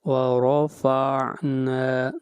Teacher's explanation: نا کو لمبا کریں گے، 1 الف کے برابر مد اصلی ہے